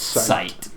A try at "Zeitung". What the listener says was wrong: Zeitung. You gotta say it fast so it doesn't sound like you're saying sight. It's Zeitung.